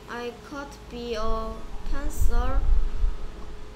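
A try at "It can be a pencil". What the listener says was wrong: Okay, I는 아닌 것 같고요.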